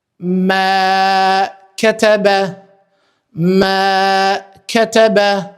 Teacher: me që vjen e zgjatur për shkak të elifit dhe ketebe nuk zgjasim asnjë zanore prej këtyre shkronjave të kësaj fjale.